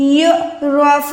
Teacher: اچھا آگے دیکھیں، يُعْرَفُ الْمُجْرِمُونَ، یا کو عین کے ساتھ ملا کے عین کو حلق کے درمیان سے ادا کریں